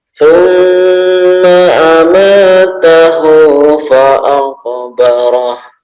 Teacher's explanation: Jadi lamanya sampai mana nih? 2 harokat saja, cukup 2 harokat ditekannya.